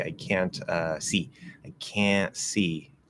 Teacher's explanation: At no point do I close the N. I don't even say the T.